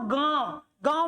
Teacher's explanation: मुंह से ज्यादा निकल रही है नाक से कम